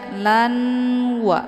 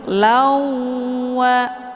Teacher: dileburkan dengan cara ditekan kemudian ditahan lebih kurang dua kali ketukan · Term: Idgham bhunah